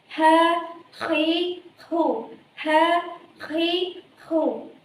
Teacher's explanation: apabila diucapkan, maka makhrajnya terletak pada tenggorokan dan dibaca menjadi ha, khi, hu.